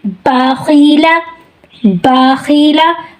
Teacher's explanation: اب دوسری اگزامپل کیا ہے ہماری، باخیلہ، باخیلہ، اب دیکھیں با، میں با بول رہی ہوں تو با میں کیا ہے کہ سانس ہمارا جاری نہیں ہے، سانس ہمارا کٹ جاتا ہے اور پھر یہ حرف ادا ہوتا ہے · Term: حروف مجہورہ